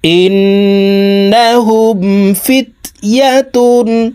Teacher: তাসদিদওয়ালা নুনের সাথে নাকের বাসি থেকে 3 সেকেন্ড পরিমাণ গুন্নাহ করে ধরে রেখে পড়ব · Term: ওয়াজিব গুন্না